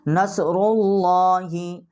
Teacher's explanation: اور صاد جو ہے اس کے اوپر جزم ہے، اور را کے اوپر جو ہے یہ پیش ہے۔ آگے جو لام ہے ہماری اللہ کی، اس کو ہم موٹا کر کے پڑھیں گے